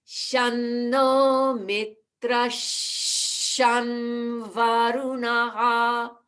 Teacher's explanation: that following sham is at the lips because it is followed by the V of varunaha